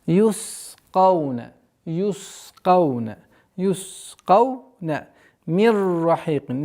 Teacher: Здесь у нас ассимиляция без назализации